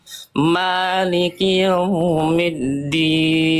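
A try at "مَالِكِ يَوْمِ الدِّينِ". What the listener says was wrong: Tinggal sempurnakan. Jangan sampai huruf ya-nya karena setelahnya waw, ya-nya tuntaskan dulu, fathah dulu. Maliki yau, ya. Jelaskan dulu ya-nya baru monyong. Maliki yaumiddin.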